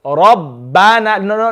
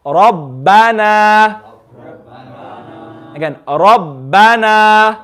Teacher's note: Notice how the ra I'm reading strong. I'm making sure my jaw is narrow. And the bana, I'm turning my mouth into a smile. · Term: full mouth